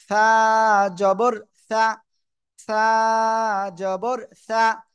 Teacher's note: ওকে, দেখেন আমি বলছি, জিহ্বার আগা সামনের উপরে দুই দাঁতের আগায় লাগবে, লাগিয়ে আমরা উচ্চারণ করব